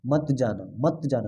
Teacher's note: जैसे मत जाना शब्द में मत जाना के बीच थोड़ा विराम है। ठीक है, मत जाना थोड़ा सा इसमें रुक रहे हैं हम लोग, मत बोलने के बाद में थोड़ा सा रुक रहे हैं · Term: संगम